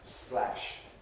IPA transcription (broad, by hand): splæʃ